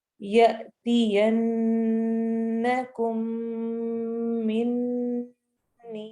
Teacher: हमजा के ऊपर जब भी जज़म आ जाए तो हमने वहां पे थोड़ा सा झटका दे के पढ़ना होता है।